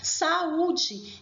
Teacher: eu tenho o som das duas vogais, a vogal A e da semivogal U, porém o som de U se sobressai, então ele é acentuado. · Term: hiatos